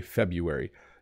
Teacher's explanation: So there's an R in here and some people do say it, but most people don't.